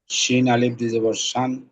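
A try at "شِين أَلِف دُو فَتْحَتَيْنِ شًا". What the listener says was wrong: হ্যাঁ।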